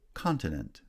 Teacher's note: Continent, stress on the first syllable.